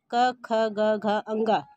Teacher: क वर्ग के अंतर्गत जो 5 व्यंजन आते हैं वह है क, ख, ग, घ, अंग, कंठव्य व्यंजन। इसको बोलने से हमारे गले के अंदर से एक ध्वनि कंपन होती है, वह कंठव्य व्यंजन कहलाता है।